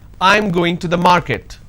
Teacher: now this is a statement and it's a flat intonation